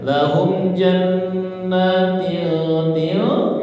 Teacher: Maka berlaku hukum ikhfa hakiki. Ya, samar-samar gunah ya.